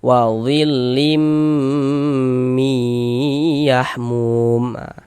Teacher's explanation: Maka ini hukumnya adalah idgham bighunah juga. Tanwinnya dimasukkan ke huruf mim. Lebur ke huruf mim. Nah kita ghunahkan. · di bagian limnya itu lim, kita tahan suaranya, kita panjangkan sepanjang 2 harokat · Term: idgham bi gunnah